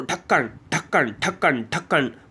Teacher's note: इन वर्णों को द्विस्पष्ट या ताड़न जात व्यंजन कहते हैं। इनका उच्चारण करते समय हमारी जीभ हमारे तालु को छूते हुए एक झटके के साथ नीचे की तरफ आती है। तो आपको जैसे ढा बोलोगे, ढा, आप ढा बोलो, ढक्कन ढक्कन ढक्कन ढक्कन बोल के देखो, एकदम से फट से नीचे आ गई ढक्कन। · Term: उत्क्षिप्त व्यंजन